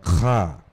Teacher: that guttural sound, not Ka, but Kha.